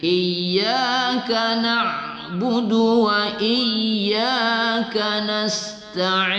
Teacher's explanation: Du itu tidak kita panjangkan. Jangan ya, dengan ain, ya.